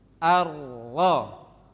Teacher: Dari ujungnya mundur sedikit ke belakang, masih ujungnya. Keluar di sana huruf ro.